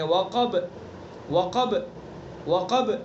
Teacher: قاف کو پر پڑھیں گے اور با کے اندر بھی قلقلہ کریں گے، یعنی آواز کو پیچھے لوٹائیں گے